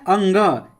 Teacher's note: अंग का उच्चारण स्थान कंठ और नासिका है अंग कंठ से बोल रहे हैं और नाक से बोल रहे